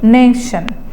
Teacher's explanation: as it is a noun, disyllabic word, and the stress is on the first syllable